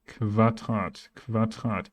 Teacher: Q always comes with a U next to it. QU. However, the pronunciation will be Kv.